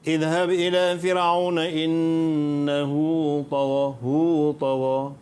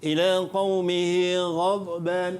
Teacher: Okey, bezanya sini qasirah, sini tawilah. Dan bacaan bagi mad silah qasirah ni 2 harakat dan bacaan bagi mad silah tawilah ni 6 harakat.